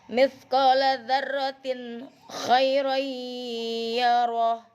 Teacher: Jadi tanwinnya dibacanya jelas, tidak boleh samar, tidak boleh dengung ya. Jadi harus zahir, harus jelas. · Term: izhar